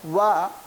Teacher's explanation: इसमें दंत और ओष्ठ दोनों का सहयोग होता है इस वर्ण का उच्चारण करने में।